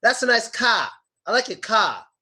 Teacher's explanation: Some people pronounce the R at the end of the word as another A.